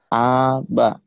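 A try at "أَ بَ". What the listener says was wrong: jangan panjang. Aba, aba, gitu. Pendek-pendek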